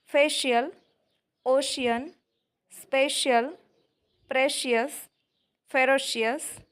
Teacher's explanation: ખ્યાલ આવશે કે જેટલા ભી સ્પેલિંગ સ્ક્રીન પર દેખાય છે તેમાં લેટરસી મોસ્ટલી મિડલ પોર્શનમાં આવેલો છે આથી અહીં સ્પેલિંગનું ઉચ્ચારણ આપણે તાલવ્ય શ વડે કરીએ છીએ